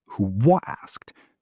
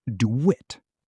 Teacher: when a word ends in an u sound like you or who or do, speakers add a small w sound.